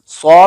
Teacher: सौ में आवाज भारी है, जिसकी वजह से ज़ुबान की जड़ ऊपर तालू की तरफ उठती है।